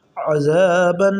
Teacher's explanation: آگے ہے جی عین زبر ع، زال الف زبر زا، عزا، با دو زبر بن، عذابن۔ آگے ضاد آ گیا ہے جو کہ حروف اخفا میں سے ہے، یہاں پر غنہ کے ساتھ پڑھیں گے عذابن، ٹھیک ہے جی، بن، یہ ہم نے غنہ کر لیا۔